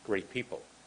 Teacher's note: Instead of going great people, which sounds weird, we almost don't say the T in great.